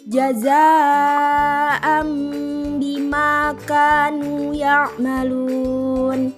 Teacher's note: Selanjutnya ada huruf za bertanda seperti alis berwarna merah disebut mad wajib mutasil, dibaca panjang 4-5 harokat · mim kecil berwarna merah disebut iqlab dengan dengung 2 harokat